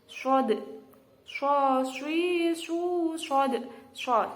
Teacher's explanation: Huruf shod ini tempatnya itu ujung lidah menghadap dan mendekat di antara gigi atas dan gigi bawah. Nah, huruf shod ini juga termasuk salah satu dari huruf isti'la. Jadi harus dibaca tebal dan harus dibaca mencucu.